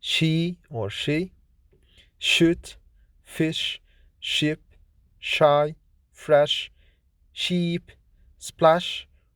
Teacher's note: Sh is voiceless, fortis, palato-alveolar, fricative consonant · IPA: /ʃ/